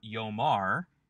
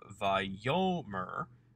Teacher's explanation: Instead of yomar, he will say, which is the typical imperfect form because of the presence of a guttural, taking a patak instead of the expected holum, we have vayomer, where the patak has actually changed to a shorter vowel, a segol